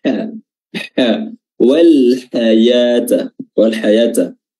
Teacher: Ha di sini makhrajnya sama dengan ain. Ya, wasatul halq, tenggorokan bagian tengah yang dipersempit sehingga menimbulkan suara yang tajam. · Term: huruf ha